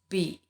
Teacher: Kemudian dia kalau kita ucapkan, ya, dia pendek. So when we pronounce B, we do it like when we pronounce P, except that B there is a vibration in the vocal cords